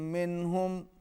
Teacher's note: نون ساکن کے بعد ہا حروف اظہار میں سے ہے، یہاں پر اظہار ہوگا